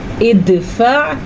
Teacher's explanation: عین، یہ حلق کے درمیان سے نکل رہا ہے